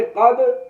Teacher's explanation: دال جو ہے یہاں پر دال ساکن ہو رہی ہے، حروف قطب مجدن میں آ رہی ہے، تو یہاں پر ہم قلقلہ کر رہے ہیں